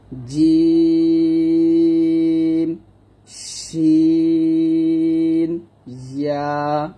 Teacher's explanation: জিহ্বার মধ্যখান তার বরাবর উপরে তালুর সঙ্গে লাগিয়ে জিমটা উচ্চারণ করতে হবে। শিন যেরকম ভাবে জিহ্বার মধ্যখান উপরে তালুতে লাগবে, জিমও লাগবে এবং ইয়াতেও লাগবে একই ভাবে।